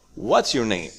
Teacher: We have a rising intonation and then we have a falling intonation.